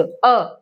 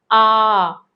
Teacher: अ बोल दिया आ इसको हम लंबा बोल रहे यानी लगभग अ को बोलने में जितना समय लिया आ को बोलने में उससे दो गुना समय ले रहे हैं